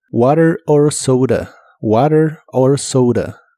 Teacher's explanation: la O de soda se pronuncia como OU